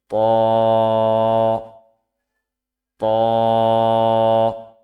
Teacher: জিহ্বার আগা সামনের উপরের দুই দাঁতের গোড়ার সঙ্গে লাগিয়ে উচ্চারিত হয় ত। আমার সাথে সাথে পড়বেন ত ত।